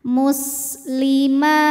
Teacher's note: Sin dari segi suara rokhawah mengalir, dari segi angin keluar angin. Dan ini punya ciri khas sifat namanya sofir, ada desis kayak suara ular.